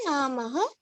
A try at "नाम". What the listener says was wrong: नाम not नमः why you say नमः नाम